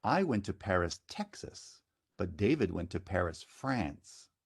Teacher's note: Texas has falling step accent, and France has falling glide.